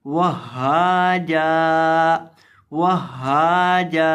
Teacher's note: جیم کو ایک الف کے برابر لمبا کر کے پڑھیں گے